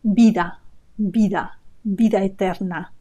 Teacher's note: That V has a B sound. So in Spanish, the B and the V have an identical sound. They both sound B, vida, vida, vida eterna.